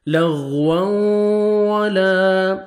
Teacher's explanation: لغوا، دیکھیں تنوین کے بعد حروف یرملون میں سے واو ہے، ادغام کریں گے غنہ کے ساتھ اور لپس کو صحیح اچھی طرح راؤنڈ میں لے کے جائیں گے تاکہ واو اچھی طرح ادا ہو